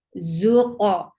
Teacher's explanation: For dhamma, circle your lips and attach it with qaf. Qaf will get qalqala. Zuqa. For dhamma, make sure you circle your lips very well, if you want to see your lips with your eyes, you will be able to see when you are creating dhamma.